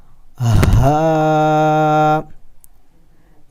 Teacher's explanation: اور یہ جو لاسٹ لائن میں ہا ہے اسے ہم نے موٹا کر کے پڑھنا ہوتا ہے. اس کی آواز ہم نے نکالنی ہوتی ہے سینے سے، چیسٹ سے